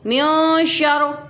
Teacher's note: شین کس میں سے آ رہا ہے؟ حرف اخفا میں سے شین آ رہا ہے، تو اخفا کر کر پڑھیں گے، اس لیے من نہیں میوں پڑھیں گے